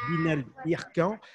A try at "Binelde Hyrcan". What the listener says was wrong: Et moi, j'aimerais bien… Dirkam, avec un N à la fin, Dirkam.